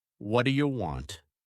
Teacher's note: Linking sounds: “What do you want” becomes “Whaddaya want”